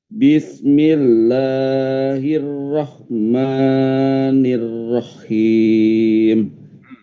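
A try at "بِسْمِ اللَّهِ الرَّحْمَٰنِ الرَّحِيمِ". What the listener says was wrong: Haknya itu yang bersih ya, jangan ada apa seraknya. Jadi jangan sampai masuk ke kha. Jangan Bismillahirrahmanirrahim. Nah itu masuknya ke kha jadinya ya. Bismillahirrahmanirrahim. Rahim.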